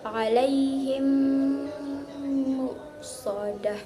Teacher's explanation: Terus selanjutnya suara yang digunakan secara sempurna yaitu 2 harokat dengan suara gunnah yang keluar dari pangkal hidung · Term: idgham mimi